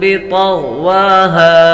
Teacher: طا اور غین دونوں حروف مستعلیہ میں سے ہیں تو دونوں کو پر پڑھیں گے